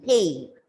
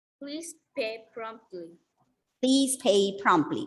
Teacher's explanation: A-Y gives the sound A. It's a diphthong. Two vowel sounds comes there together and the sound is A, pay.